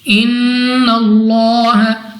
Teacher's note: ان اللہ نون مشدد غنہ کر کے پڑھیں گے